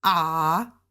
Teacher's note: The first tone, ah, is just high and straight across.